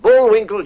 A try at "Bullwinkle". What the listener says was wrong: You said Bullwinkle with one L. It's supposed to sound like this. The Bullwinkle Show. L's. That's with three L's. I put back the one you dropped.